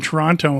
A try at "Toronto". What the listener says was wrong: Yeah, you mispronounced it though. You don't pronounce the second T. Toronto.